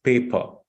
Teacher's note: again R is not pronounced it's silent